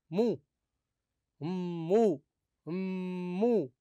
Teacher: الميم المشدده هي ميمان ميمان ميمان الاولى ساكنه والاخرى متحركه فادغمت الميم الاولى في الثانيه